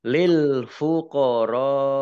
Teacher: Ra fathah alif matobi'i, tetapi karena bertemu dengan huruf hamzah dalam satu kata, fuqara ini satu kata, maka menjadi mad wajib muttasil. Dibaca panjang 5 harokat. Lamnya dibaca double ya, karena tasdidnya.